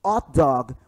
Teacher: H em inglês ele geralmente tem som de R o r de rua e roupa